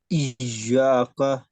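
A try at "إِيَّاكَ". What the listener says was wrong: یا کو لمبا کریں, حروف مدہ ہے. یہ الف جو ہے نا, الف حروف مدہ میں سے ہے. دیکھیں اس سے پہلے زبر آ رہا ہے سب میں. میم الف ما, میم الف زبر ما, اور پہلے لفظ میں عین الف زبر آ, اور اس میں یا مدہ بھی ہے.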